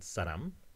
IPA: saɾam